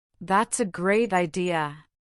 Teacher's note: listen for the slight fall-rise pattern that often hints at doubt, politeness, or an unspoken suggestion